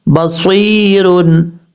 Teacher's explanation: जब यहाँ पे स्टॉप करेंगे तो रा साकिन हो जाएगा, और ये या मद्दा है, स्वाद के बाद जो या आ रहा है या मद्दा है, या साकिन से पहले ज़ेर है इसलिए यहाँ पर या मद्दा होगा। एक अलिफ की मकदार लंबा करेंगे